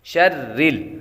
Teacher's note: شرل، را یہاں پر باریک پڑھیں گے، را کے نیچے زیر ہو تو را کو باریک پڑھتے ہیں